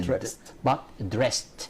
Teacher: So here the ED is pronounced as T.